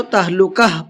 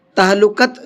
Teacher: إِلَى التَّهْلُكَةِ، یہاں پر ہم نے یہ گول تا پر وقف کیا ہے، اور گول تا پر وقف کرتے ہیں تو گول تا ہا بن جاتی ہے، تو اس لیے میں نے اس کو تہلکہ پڑھا ہے، تہلکت نہیں پڑھا ہے، ٹھیک ہے۔